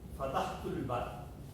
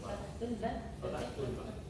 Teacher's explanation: La eliminación de la vocal inicial A le hace perder su valor silábico